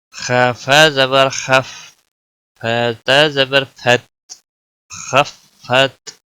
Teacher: پہلے فا خا کے ساتھ ملے گا اور پھر فا تا کے ساتھ ملے گا، خا کو موٹا پڑیں گے